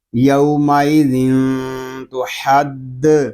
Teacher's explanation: پیش تو، حا دال زبر حد، تو حد، یومئذ تو حد، یہاں تنوین کے بعد حروف اخفا میں سے تا آ رہا ہے، اس لیے یہاں پر اخفا بھی ہوگا